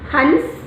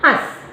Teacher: जो अनुस्वार है उसकी ध्वनि नाक से निकलती है, और जो अनुनासिक है अर्थात चंद्र बिंदु, वह मुँह से ज़्यादा और नाक से कम निकलती है।